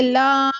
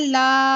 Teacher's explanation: खड़ा जबर को हम दो सेकंड खींच के पढ़ेंगे जैस जुबान का पूरा फ्रंट का हिस्सा आपके ऊपर के सारे